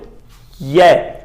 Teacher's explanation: जीभ दा विचला हिस्सा तालू नाल लगदा है ते यह दा उच्चारण हुंदा है। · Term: तालवी